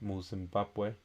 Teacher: For example, in the word Zimbabwe, in Zimbabwe the stress falls on the ba